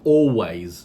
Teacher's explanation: the leh sound can be elided from the word always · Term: elision